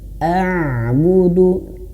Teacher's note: Ain itu dia mengalir suaranya sedikit. Karena huruf ain dia punya sifat namanya tawassud, mengalir sedikit.